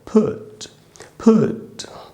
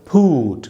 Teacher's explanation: इसको हम फूट नहीं बोल सकते क्योंकि ये छोटा ऊ है, बड़ा ऊ नहीं है।